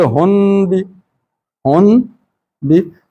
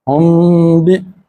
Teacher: نون میں زبان استعمال ہوتی ہے باقی جگہ پہ، لیکن یہاں پہ زبان استعمال نہیں ہوگی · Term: میم کی آواز